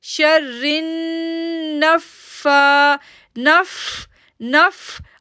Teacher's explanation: اب میں نف پہ تھوڑی دیر رک رہی ہوں کیونکہ تشدید ہے